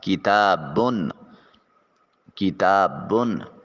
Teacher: باقی اوپر دو پیشیں ہیں، اس کی ادائیگی کے وقت ایک نون کی آواز پیدا ہوگی جسے نون تنوین کا نام دیا جائے گا